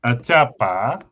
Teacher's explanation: consonants are also palatalized after some instances of a